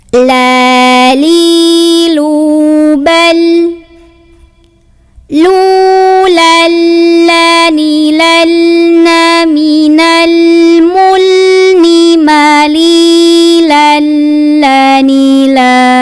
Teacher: La itu punya sifat tawasud namanya, jadi tidak terlalu mengalir, suaranya tidak juga terlalu ditahan, jadi sedang-sedang saja.